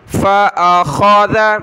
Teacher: خا کلرفل ہے، موٹا پڑھیں